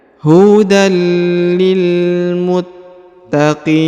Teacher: huruf tanwin bertemu dengan lam bertasdid maka tanwinnya menghilang melebur ke sini ke huruf lam lalu ditahan dan ditekan dua harakat